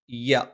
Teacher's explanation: നാവിന്റെ മധ്യഭാഗം മേലെ അണ്ണാക്കിലാണ്